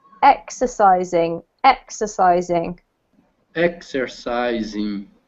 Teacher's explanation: so the emphasis here is on the first syllable